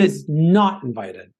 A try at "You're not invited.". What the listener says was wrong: He said it right, but you still put the emphasis on the he's there with that, Because it's in comparison to her. Like, oh, would you like to come along?